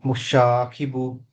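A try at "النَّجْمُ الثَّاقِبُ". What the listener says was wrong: షీన్ కాదు అది స మూడు కొమ్ములు లేవు కింద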